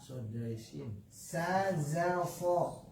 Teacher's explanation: Ujung lidah mendekat ke ujung gigi bawah